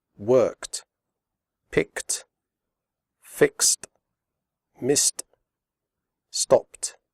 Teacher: final ed is pronounced like t, as in the word hot. The e remains silent.